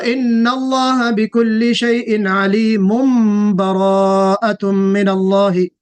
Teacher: تو یہاں پہ علیم کے بعد براءتم با آ رہا ہے تو ہم اس کو میم سے بدل رہے ہیں. تو ان اللہ بکل شیء علیم براءۃ من اللہ. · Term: اقلاب